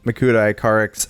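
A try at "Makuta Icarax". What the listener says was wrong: The way you say Makuta Icarex makes it sound like Makuta iCarly, and that's not an image I want. Icarex. Is it Icarix or Samuel? Icarix.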